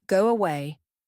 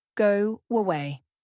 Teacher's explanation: for vowel to vowel like go away. A soft W connects them.